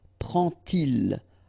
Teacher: And so this little d here is in red just to show you that you won't pronounce it like d to make the liaison, but you will pronounce it like t.